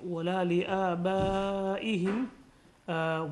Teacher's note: It's mad munfasil, and it should be 4 to 5 harakats long.